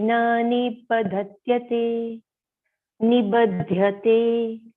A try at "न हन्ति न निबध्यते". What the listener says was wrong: It is actually nahanti na nibadhyate. There are two nas. So one na is the previous one. Nahanti na nibadhyate.